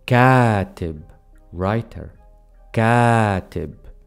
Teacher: I am intentionally extending the long vowel